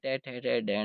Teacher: टे वर्ग में टे ठे रे डैण है पांचों अक्षर, फिर रे और फिर श। इन सब का उच्चारण स्थान मूर्धा होती है, इसलिए इनको मूर्धन्य वर्ण कहा जाता है।